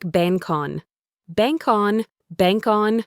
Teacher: The word bank ends with a K sound. This K sound can link to the next word on. It sounds like bankon.